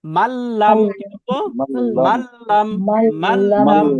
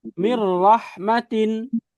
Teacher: ঈদগাম হবে গুন্না হবে না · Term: গুন্না ছাড়া ঈদগাম